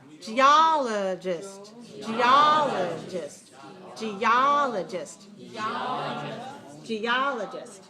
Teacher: third syllable weak and the last syllable also a very weak